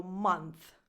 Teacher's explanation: the th at the end is a voiceless th like the one that you have in the word think. So month, not month, month.